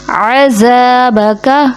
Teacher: یہاں پہ ذال کو زا بنا دیا جاتا ہے، جیسے اس میں سیٹی لے آتے ہیں . عذابک جو درست نہیں، ذال کبھی بھی سیٹی کے ساتھ